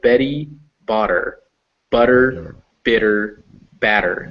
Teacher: So Betty Botter, butter, bitter, batter, and you can hear it, that der sound. It's not really a T, it's not really a D even, it's kind of halfway between the two.